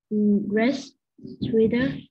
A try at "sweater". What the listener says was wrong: Sweater, not sweeter. Sweater.